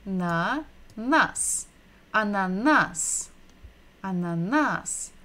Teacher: So we're stressing the final syllable, the last syllable.